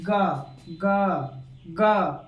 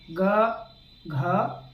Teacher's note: जरा ध्यान देना, जो सघोष वर्ण होता है, जब आप इसका उच्चारण करोगे, तो हमारा जो स्वर यंत्र है, लैरिंग्स, जो हमारा लैरिंग्स है, उसमें अलग ही प्रकार का कंपन होगा